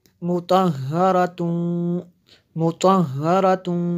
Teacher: دیکھیں تنوین ہے، تنوین کے بعد میم ہے، یہاں پہ حروف یرملون میں سے یہاں پہ ادغام ہوگا